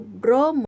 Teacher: Pada kata bromo terdapat dua konsonan yang diucapkan sekaligus, yaitu huruf B dan R. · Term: kluster